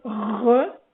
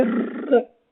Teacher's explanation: le R, il est fait dans le fond de la gorge, puis le R, il est fait en avant de la bouche